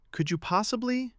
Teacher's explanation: Let your voice rise slightly on the request. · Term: intonation